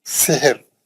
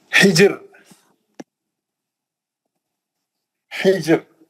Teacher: रा साकिन है, उससे पहले वाला भी साकिन है, तीसरे हर्फ पे जेर है, रा पतली पड़ेंगे